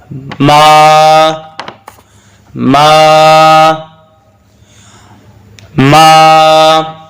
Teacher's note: ناک سے آواز نہیں آنی چاہیے، ناک سے آواز صرف غنہ کی آنی چاہیے اور یہاں غنہ نہیں ہے